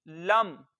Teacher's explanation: लाम को मीम के साथ हम मिला देंगे मुंह खोल के, और लाम को लंबा करके नहीं पढ़ेंगे। लाम जबर मीम लम।